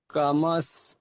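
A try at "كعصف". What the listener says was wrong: কাআস, ওটা মিম নয়, ওটা আইন। কাআস।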